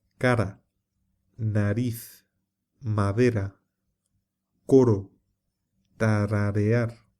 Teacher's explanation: cuando está entre dos vocales se pronuncia como una vibración suave y se escribe simple